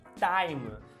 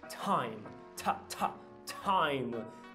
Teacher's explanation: Mas no inglês você tem que aspirar. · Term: aspiração